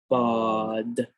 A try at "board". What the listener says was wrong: Open your mouth a little bit. Board.